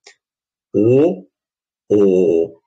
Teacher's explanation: огублянка достаточно глубокий такой звук получается